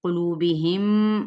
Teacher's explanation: دونوں ہونٹ ملانے سے میم ادا ہوگا